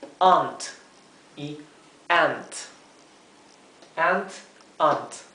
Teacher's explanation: Es como más cerrada la palabra para tía.